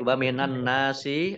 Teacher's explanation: Nun ditandai ada nunnya tasdid. Nun tasdid dibaca gunnah atau mendengung, ditahan 2 harokat. Nun fathah alif mat tabi'i panjang 2 harokat.